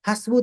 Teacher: hasbu tiga huruf bacalah tiga ketukan